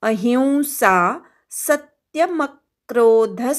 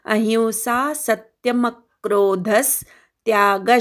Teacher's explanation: ही वरचा अनुस्वारा इ असा उच्चार होतो अहिंसा सत्य म क्रोध सत्य मधल्या स वर आघात म वर आघात ध वर आघात